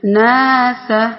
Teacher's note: نون جو ہے باریک پڑھا جانے والا ہے، تو اس کے ساتھ جو الف آ رہی ہے وہ بھی باریک پڑھی جا رہی ہے